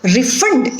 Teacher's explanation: the stress is on the second syllable refund so here it is used as a verb